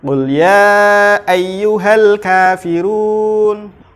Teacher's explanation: Alif lam qamariyah adalah apabila ada huruf alif lam bertemu dengan huruf qamariyah, maka alnya dibaca jelas